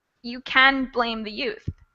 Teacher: they don't really pronounce the t in can't so it ends up sounding like can